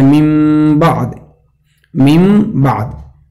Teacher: नून साकिन और तनवीन के बाद बा आए तो मीम से बदल कर पढ़ा जाए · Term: कल्ब